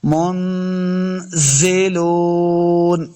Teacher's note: والا قاعدہ ہے، تو یہاں پہ بھی منزلون اخفا کرنا ہے، نون ساکن کے بعد زا اخفا سے ہے ، منزلون، زا کو سختی کے ساتھ پڑھنا ہے، لام پیش